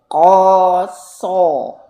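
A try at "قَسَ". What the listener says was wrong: bibirnya biasa aja ya, bukan kosong.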